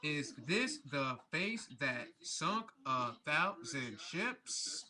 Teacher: It's a meter of five stressed and unstressed syllables. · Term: iambic pentameter